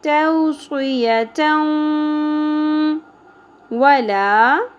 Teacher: اس کے بعد نیکسٹ حروف یمنو میں سے واو آ گیا ہمارے پاس تو یہاں پر ادغام مع الغنہ ہوگا